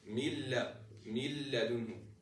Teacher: But for idgham, we said we neglect the noon totally and put a shadda on the letter directly after the noon. So what I would say is min ladunhu.